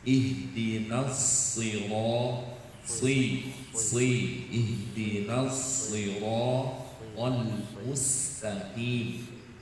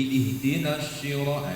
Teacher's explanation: Itu karena sudah pindah makhraj. Shad itu ujung lidah, shin itu tengah ya. Jadi ihdinas syiro itu shin.